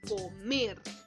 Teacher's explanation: Cargo la voz en la última sílaba, por lo tanto es una palabra aguda.